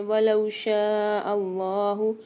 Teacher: واو مدہ آ رہی ہے ولو میں تو یہاں پر 1 الف مدار لام کو کھینچ کے پڑھیں گے